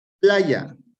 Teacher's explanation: lleva el mayor acento de voz en la penúltima sílaba